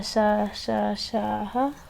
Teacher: और फिर उसके बाद ऊष्म संघर्षी व्यंजन यानी अंदर से गर्म हवा के साथ जिनका जो है उच्चारण निकले वो ऊष्म संघर्षी व्यंजन है